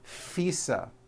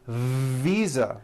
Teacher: I said fisa with an unvoiced F I should have said Visa with a voice Visa